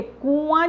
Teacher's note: आ जब बोल रहे हैं तो आ ऐसे बोलते हैं, लेकिन आ बोल रहे हैं तो लग रहा है नाक से आवाज़ आ रही है, अनुनासिक।